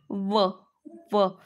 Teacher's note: त्यानंतर व व व. दात पण आहे ओठ पण आहे म्हणून हा झाला दंतोष्ठ